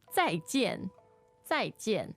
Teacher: So 再见, also 2 fourth tones.